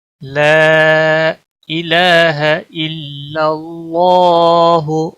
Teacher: لا الف مدہ ہے، ایک الف کے برابر کھینچنا ہے